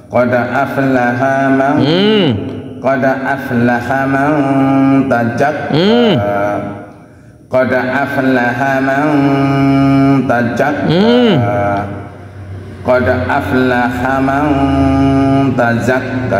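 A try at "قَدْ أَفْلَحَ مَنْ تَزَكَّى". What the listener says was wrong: Nah, huruf zai bukan ja.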